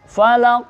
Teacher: Ini termasuk qalqalah yang kubra. Falaq. Karena qafnya besar.